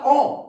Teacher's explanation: तो मुंह खुल रहा है ना, गोल भी हो रही है, मतलब कि सर्कुलर हो रही है एक तरीके से, हमारा जो मुंह की साइज है वो वृत्त की तरह हो रहा है, एक सर्कल की तरह हो रहा है, ठीक है। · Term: व्रतमुखी